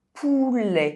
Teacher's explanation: E is pronounced [ɛ] in words ending with -ET